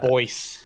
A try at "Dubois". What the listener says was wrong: Dubois. The S is silent when you say it. Dubois.